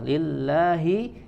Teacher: jalalah di sini dibaca tipis karena sebelumnya kasrah